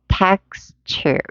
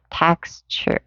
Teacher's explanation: text 할 때 이 t하고 요 u하고 만나서 texture라는 취 사운드로 들린다는 거